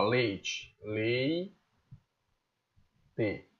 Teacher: eu vou ter leite eu vou ter um grito de tongo decrescente pois eu tenho primeiro uma vogal mais semivogal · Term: ditongo decrescente